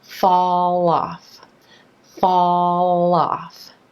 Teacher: So here we have the dark L sound linking over in front of a word that starts with a vowel.